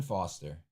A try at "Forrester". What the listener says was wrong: Forrester. You missed a couple letters. You read it too fast. I think it says Forrester.